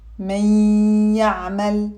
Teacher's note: The ya here is accompanied by a long gunna.